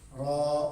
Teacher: Ada ra-nya itu mad lazim harfi mukhaffaf mad 2 harakat.